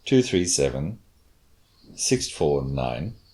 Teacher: So it's a grouping, but it's a little fall at the end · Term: falling intonation